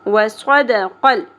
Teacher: قلقلہ نہیں کرنا لام ساکن پہ